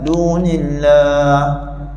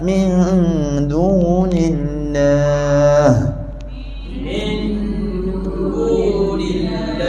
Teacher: Bila matikan huruf ha dekat lafaz Allah tu, matikan dengan jelas. Jelaskan angin ha. · Jelaskan angin ha yang terakhir.